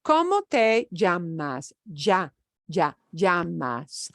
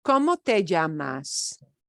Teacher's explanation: my particular accent, there's a tiny bit of a j before the y sound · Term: double L